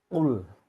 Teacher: Huruf lam disukun, makhraj ada di ujung lidah menyentuh gusi atas. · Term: lam sukun